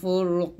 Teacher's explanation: ফারা পেশ ফুর রসে মোটা করবে